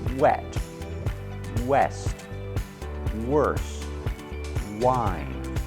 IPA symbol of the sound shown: w